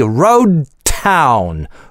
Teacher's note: Road /d/ безрелизное звучит. А дальше /t/ с аспирацией.